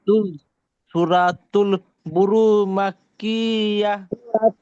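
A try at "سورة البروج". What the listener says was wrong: ভাই আবার রা হয়ে যাচ্ছে, একটু খেয়াল করে পড়েন ভাই।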